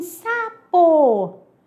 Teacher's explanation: sapo é com S, mas saiu com som de Z